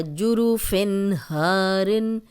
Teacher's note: دیکھیں یہاں سے ہم نے شروع کیا تھا وَجَنَّاتٍ أَلْفَافًا، اب کچھ بھی نہیں کیا، کوئی غنہ نہیں کیا، تن پڑھا ہے اور آگے حمزہ تھا اس لیے سیدھا سیدھا ہم نے پڑھا ہے جُرُفٍ ہارن، فن تنوین ہے، آگے حروف حلقی ہے، غنہ نہیں کیا